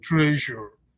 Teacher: most of the time we say treasure right with no vibration but I want you to put the vibration